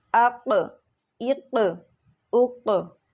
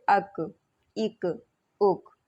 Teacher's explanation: زبان کی جڑ کی انتہا یعنی کہ جہاں سے ہماری زبان ختم ہوتی ہے اور اس کے مقابل اوپر کے تالو قاف کے مخرج سے ذرا منہ کی طرف ہٹ کر نرمی سے ادا ہوتا ہے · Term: کاف